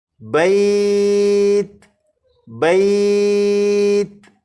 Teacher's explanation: تا پر جب آپ پہنچیں تو آواز ختم ہو جائے